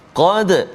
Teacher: Qad tebal, qaf qa, pangkal lidah dia duduk belakang. Belakang pangkal lidah tu dekat dengan anak tekak kan.